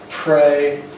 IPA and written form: preɪ (pray)